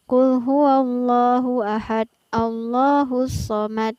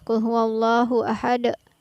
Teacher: ada pantulan di setiap ujung ayat